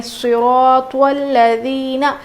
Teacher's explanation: دیکھیے یہاں پر ذال ہلکا پڑھیں گے